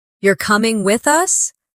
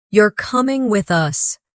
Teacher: The rise in your voice at the end of the question signals uncertainty, while the drop at the end of the statement signals certainty. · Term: intonation